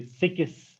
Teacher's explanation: Because in our mother tongue, when we talk about mother tongue Kashmiri, these two sounds, k and s, they never come together. In between these two sounds, k and s, there is always a vowel in case of our Kashmiri mother tongue.